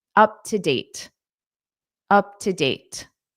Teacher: Up to date. Now here because date ends the sentence and you naturally take a pause anyway, you can pronounce that T